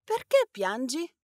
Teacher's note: Well, you have to listen to the intonation. Remember, questions in Italian have a rising pitch towards the end of the phrase